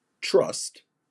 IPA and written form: trʌst (Trust)